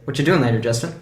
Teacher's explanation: So the what is actually stressed because it's a question word.